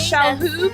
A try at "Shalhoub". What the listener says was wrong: You say the H.